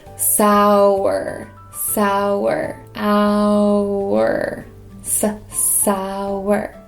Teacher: it sounds kind of like there's a w in there